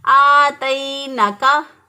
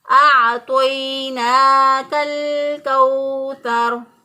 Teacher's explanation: आइन को हमजा से बदल दिया, तो आ को ता से बदल दिया और नून खड़ी जबर को नून जबर पढ़ लिया।